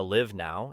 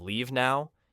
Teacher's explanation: live has a short I like sit and leave has a long e sound. When someone says I want to live now, instead of leave now, it creates confusion.